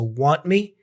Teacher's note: The T for want kind of disappears. It becomes a stop consonant pretty much.